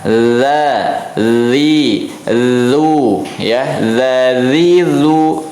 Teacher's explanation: ujung lidah bertemu dengan ujung gigi seri atas tuh ya, maka kita ucapkan za, zi, lu ya.